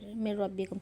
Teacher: اس میں غنہ نہیں ہوتا، نون گر جاتا ہے اور میم کو را سے ملاتے ہیں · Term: ادغام بلا غنہ